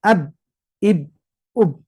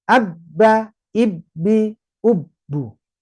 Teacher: Oke kita fokus dulu ini ternyata huruf Eh syiddah ini adalah huruf yang suaranya tertahan sehingga kesannya ee suara kita menjadi putus · syiddah suara langsung putus suara langsung berhenti tidak ada penambahan bunyi